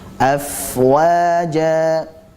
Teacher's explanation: Fa-nya kita alirkan karena fa memiliki sifat rokhawah dan juga hamas. Dari segi suara dan nafas dia sama-sama mengalir.